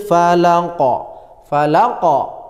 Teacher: Qalqalah Kubro pantulannya harus kuat jelas begitu caranya lamnya ya lamnya ini ditekan falaqo q begitu ya